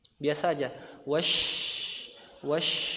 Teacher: Karena makhrajnya bukan di bibir. Syin itu makhrajnya di alisan, di lidah bagian tengah. Ya, jadi monyong atau tidaknya bibir kita itu enggak ngefek, enggak pengaruh sama sekali terhadap huruf syin.